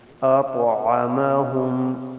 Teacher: تو حروف قلقلہ میں سے ہے، ساکن ہے، تو یہاں قلقلہ بھی کریں گے، یعنی آواز کو ذرا سنبل کریں گے.